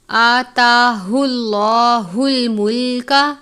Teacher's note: لفظ اللہ کے لام سے پہلے پیش ہے تو اس لام کو پر پڑھیں گے، اور اس طریقے کو تفخیم کہتے ہیں، یعنی حرف کو پر کر کے پڑھنا۔